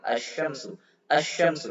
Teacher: Jadi lamnya nggak kelihatan, dimasukkan ke shin, namanya huruf syamsiyah karena qamarun syamsiyun. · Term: idgham